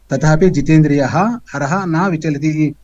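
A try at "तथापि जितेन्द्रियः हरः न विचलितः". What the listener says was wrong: Vichalitaha is there. Is Vichalati is there?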